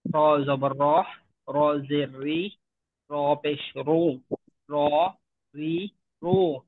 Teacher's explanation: জিহ্বার আগার পিঠ তার বরাবর উপরের তালুর সঙ্গে লাগাই উচ্চারিত হয়।